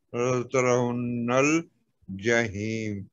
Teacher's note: نون پہ تشدید ہے، تو نون کو زور دے کے 2 حرکت کے برابر پڑھیں گے